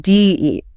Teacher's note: the D at the beginning of did starts to weaken because it's unstressed, right? So we get D-eat.